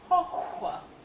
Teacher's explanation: Voiceless, labial, velar, fricative.